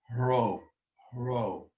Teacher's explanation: It's an aspirated R, Ro. We call it in Greek a hard breathing.